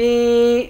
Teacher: ذال کو یا سے ملا کر ذال پر اخفا کریں گے، اس را کو پر پڑھیں گے۔